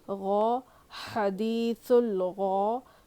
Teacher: غین جو کہ حروف مستعلیہ میں سے ہے، موٹا پڑھا جائے گا